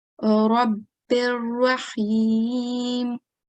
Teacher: if it's followed by lam mushaddad or ra mushaddad, it is idgham kamil because we don't do any nasal sound